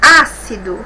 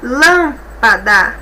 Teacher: nós observamos aqui que todas tem três sílabas e a antepenúltima que é mais forte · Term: proparoxítona